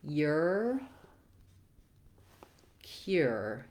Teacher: it has a gliding Y sound before it